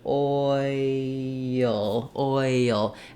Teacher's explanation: it's probably moving from an O to an e to a ya to a schwa to an L